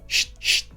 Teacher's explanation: 간단하게 말하면 치차름은 쉿쉿 하는 이 마찰 소리를 가진 자음이라고 할 수 있습니다